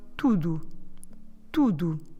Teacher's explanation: we need to stress the first bit of the word. Tu, not the do.